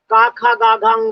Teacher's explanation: समय वह कोमल स्पर्श करते हैं ए फॉर्मल तालू में और इनके बोलने में कंठ का सहारा लिया जाता है गले के सहारे बोले जाते हैं